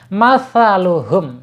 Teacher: Harus pakai sa ya. Enggak boleh pakai sin.